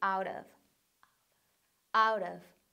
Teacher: 뭐로 바꾸냐면 t를 약한 r sound, 약한 r 사운드로 바꿉니다.